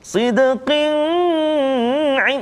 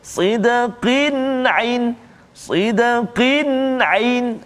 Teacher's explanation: tanwin bertemu dengan huruf ain, maka kita tak boleh baca dengung kat situ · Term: izhar halqi